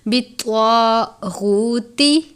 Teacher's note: تا کو صرف ظاہر کرتے ہیں، طا کو پر پڑھیں گے، طا حروف مستعلیہ میں سے ہے۔